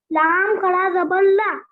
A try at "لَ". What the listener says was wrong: لام کھڑا زبر کہاں ہے بیٹا؟ لام زبر لا ہے. کھڑا زبر نہیں.